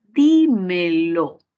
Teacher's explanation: ya que tiene 3 sílabas y la mayor fuerza de voz va a ir en la raíz verbal, di, entonces sería una palabra esdrújula